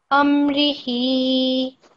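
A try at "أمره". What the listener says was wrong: Amri, like this. Try not to prolong this. It sounds slightly prolonged. Just say it a little bit faster.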